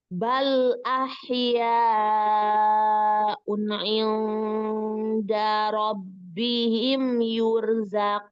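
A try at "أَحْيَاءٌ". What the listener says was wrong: Sempurnakan dulu. Un'i, jangan unni ya, harus jelas. Ahya un'i, baru ke i.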